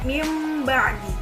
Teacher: Yang ketiga adalah iqlab. Jadi, apabila nun sukun atau tanwin bertemu dengan huruf ba, itu maka cara membacanya itu membalikkan bacaan atau seperti membaca huruf mim